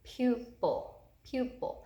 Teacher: so this first syllable is an open u syllable pupil pupil the accented U is in the first syllable and it's an open u syllable